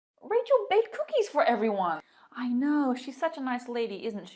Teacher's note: if i'm not looking for information i'm just confirming information the intonation falls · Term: falling intonation